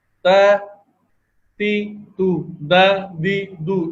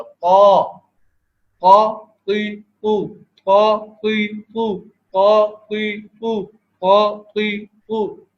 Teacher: دال اور تا کی ادائیگی کے اندر دیکھیں حلق تنگ نہیں ہے اور قا کے اندر حلق تنگ ہے. تو جو حرف موٹا پڑا جائے اس کے لیے حلق کو تنگ کرنا ہوتا ہے، زبان کو معمولی سا کر دیتے ہیں تو اس سے وہ حرف موٹا ہو جاتا ہے.